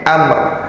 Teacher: Jadi amnya, mimnya disukun, kemudian ada seolah-olah mengucapkan huruf ro, tapi ro-nya disukun.